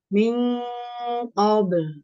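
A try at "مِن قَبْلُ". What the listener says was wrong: Itu masih tipis, masih no. Mil qabl. Naikin pangkalitannya.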